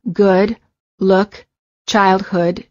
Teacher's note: an American accent uh as in good uh as in good the lips are very rounded and the tongue is relaxed the back of the tongue is raised and slightly higher than for the O